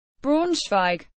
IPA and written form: ˈbʁaʊ̯nʃvaɪ̯k (Braunschweig)